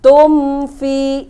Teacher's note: Nah, di sini ada mim sukun bertemu dengan huruf fa, itu idhar safawi. Jadi dibacanya jelas, nggak boleh ada dengung, nggak boleh ditahan, jelas.